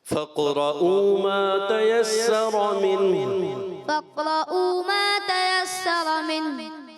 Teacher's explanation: قاف میں قلقلہ کریں گے